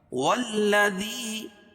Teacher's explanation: یا ساکن سے پہلے زیر ہو تو یا مدہ اس کو ایک الف کے برابر کھینچ کے پڑھیں گے